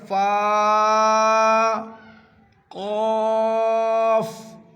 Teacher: قاف ایک ایسا لفظ ہے کہ حلق سے نکلتا ہے جہاں کی زبان کی جڑ ہے اور حلق کے اندر ایک چھوٹا سا گوشت لٹکتا ہوتا ہے وہیں سے نکلے گا قاف موٹی آواز میں. · سامنے کے چوڑے سے اوپر والے دانت جو ہیں ان کے نوک ہونٹ کے بیچ میں ٹچ کریں گے. اس سے نکلے گا فا.